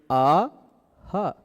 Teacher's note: दोनों का अभ्यंतर उच्चारण स्थान कंठ है और दोनों का आभ्यंतर प्रयत्न भी देखिए अ ह विवृत है।